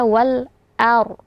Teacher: dengan a ya dibaca jelas Alif lamnya Wal kemudian a a di situ huruf a bertemu dengan ro sukun ya Yang mana pada kondisi seperti ini rnya harus dibaca tebal · ro sukun, ya, yang mana pada kondisi seperti ini ro-nya harus dibaca tebal. Jadi dibaca wal ar, ya.